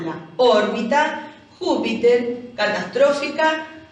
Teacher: cargas la voz en la antepenúltima